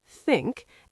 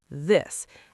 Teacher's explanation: English has 2 th sounds, the soft one in think and the voiced one in this